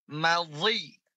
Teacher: Nah, ketika dia kasroh, dia tetap ada idbaqnya.